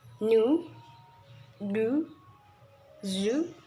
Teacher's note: we articulate this sound by raising the front part of the tongue to the alveolar ridge